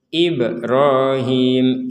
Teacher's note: sekarang huruf ba ini barulah harus dipantulkan